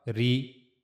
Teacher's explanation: It will be soft not bold because Rah has kasra here. So we have to read it light ra.